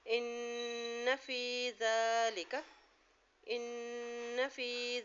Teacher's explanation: یہاں غنہ ادا کریں اور زال کو نرمی سے ادا کریں، اور زال کے اوپر کھڑی زبر ہے، یہاں زال کو ایک حرکت لمبا بھی پڑھنا ہے